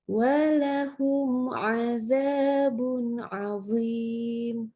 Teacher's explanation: Jadi idhar tapi syafawi disebutnya penjelasannya syafawi itu adalah huruf-huruf dari bibir gitu ya, karena mim itu huruf yang keluar dari bibir. Ya, mimnya jadi kita bacanya jelas, nggak pakai dengung.